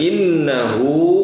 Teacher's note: hu-nya itu panjang, 2 harokat